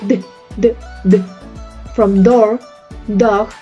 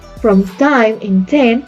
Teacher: When you say d, from door, dog, you can feel your vocal cords vibrate. But when you pronounce from time in 10, you can't feel that vibration because that is voiceless. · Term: voiced